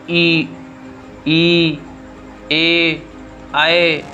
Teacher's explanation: अग्र स्वर का मतलब ये होता है आपका जो जीवा का अगले भाग से बोले जाने वाले वर्ण हो, जैसे ई, ए, आए।